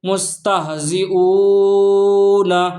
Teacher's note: ہم یہاں او کو کیوں کھینچ کر پڑھ لیں؟ کیونکہ واو ساکن ہے اور اس سے پہلے پیش ہے، تو ہم اس کو کھینچ کر پڑھیں گے